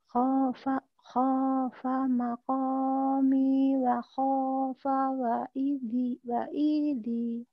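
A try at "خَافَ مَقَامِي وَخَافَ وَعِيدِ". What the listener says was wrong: Iya, wa'idi ya, wa'inya yang panjang.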